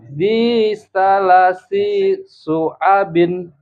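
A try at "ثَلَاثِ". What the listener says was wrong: Lahnya panjang.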